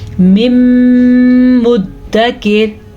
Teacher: ان دونوں کو ملا کے پڑھیں گے اور غنے کے ساتھ پڑھیں گے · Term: ادغام بالغنہ